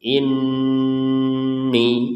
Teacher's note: Nun bertasdid ini kita wajib dengung 100%